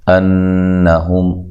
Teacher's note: نون اور میم مشدد پہ غنہ ضروری ہوتا ہے، غنہ کی مقدار 1 الف کے برابر ہے